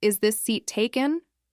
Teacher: No rising tone, no change in pitch, just flat.